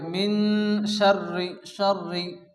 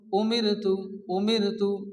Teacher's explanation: বারিক অর্থাৎ পাতলা অর্থাৎ স্বাভাবিক অবস্থায় আমরা যেরকম স্বাভাবিক অবস্থায় র উচ্চারণ করি র সিম্পল হয়ে র উচ্চারণ এটাকে বলা হয় বারিক এখানে কি